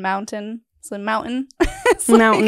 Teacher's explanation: we don't pronounce our T's like in mountain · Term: Utah